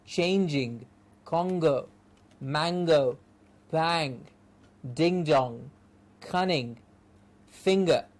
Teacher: this is the back portion of the tongue raising up to say like king